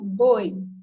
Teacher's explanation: Eu tenho B, né, que é uma letra, o O, que é uma letra, e o I, que é uma letra. Só que de som, eu tenho o B, o O, que é forte, e o I, que fica mais suave. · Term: semivogal